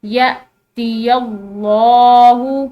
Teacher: لگی ہوئی ہو، تو جو ہے اس کو حمزہ پڑھتے ہیں، اور حمزہ جھٹکے کے ساتھ پڑھی جاتی ہے